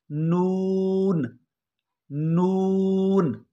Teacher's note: ज़बान का किनारा और सामने वाले दांत और उनके साथ नुकीले दांतों की जड़ों से मिलाने से अदा होगा